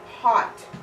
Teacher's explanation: and we want to get it low you have hot and your tongue comes way back and low